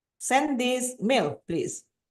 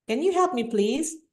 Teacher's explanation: If you use like rising intonation, it sounds like appealing.